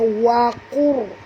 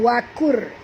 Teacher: Qur sini tebal, ya, qaf huruf isti'la. Ra ini apabila dia mati, huruf sebelumnya berbaris depan juga kena baca tebal. Jadi bacaan dia waqur, bukan wakur tapi waqur, tebal, ya.